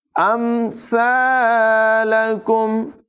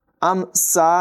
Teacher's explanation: سا کی آواز بغیر سیٹی کے نکالیں گے. امثالکم، ام سا نہیں پڑھیں گے.